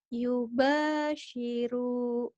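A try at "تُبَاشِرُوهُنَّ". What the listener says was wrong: Yuba tadi. Tuba. Bukan Yuba ya.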